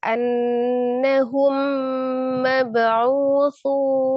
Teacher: Mim sukun ketemu dengan mimnya, dia gunnahkan idgham mimi